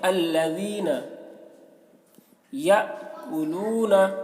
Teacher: حمزہ ساکنہ ہے، حمزہ ساکنہ میں جھٹکا لگا کے پڑھیں گے